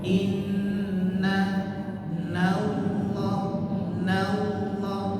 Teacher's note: Nanya tipis Allahnya tebal.